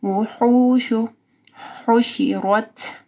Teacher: ہا کو واضح پڑھنا ہے گلے کے درمیانی حصے سے